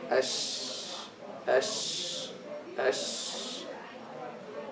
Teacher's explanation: part of the sound leaves the mouth from the space between the teeth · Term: tafashi